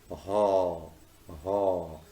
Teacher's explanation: This sound is usually described as a voiceless glottal. The glottis is the space between the vocal folds in the larynx.